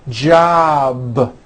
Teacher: a voiced sound job it's not J with an unvoiced P keep the voicing going throughout the whole word job with a voiced B ending